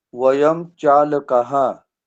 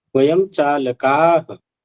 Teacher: का को खींचना है, आपका का ह्रस्व रह जाता है